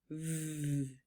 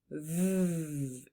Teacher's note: So to make that sound, that buzzing vv sound, you gently place your lower lip against your upper teeth. V. Then turn on your voice so you'll feel your throat buzzing and let the sound flow smoothly like a little buzz sound. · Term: labio dental voiced consonant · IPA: /v/